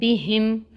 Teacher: ناک میں ہم نے ایکچولی میم کی آواز کو ٹھہرانا ہے، غنہ کرنا ہے